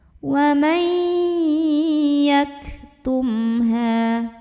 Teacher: Karena ada mim sukun yang ketemu sama huruf ha. Maka mim sukunnya ini kita bunyikan dengan jelas, bunyi dan tidak perlu ditahan. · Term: idhar syafawi